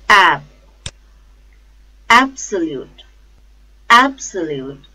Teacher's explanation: the stress is on first syllable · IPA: /ˈabsəluːt/